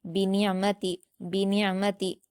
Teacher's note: नून को आइन से मिलाकर हलक से अदा करेंगे और आइन पर कलकला नहीं करेंगे और ना ही झटका देंगे। · وَأَمَّا بِنِعْمَتِ، با پر حرکت نون پر بھی حرکت ہے، عین پر جزم نون کو عین سے ملا کر حلق سے ادا کریں گے اور عین پر قلقلہ نہیں کریں گے اور نہ ہی جھٹکا دیں گے، میم پر حرکت ہے اور تا پر بھی حرکت، ان کو جلد پڑھیں گے۔ · را کو پر پڑھیں گے، با اور کاف کو جلد پڑھیں گے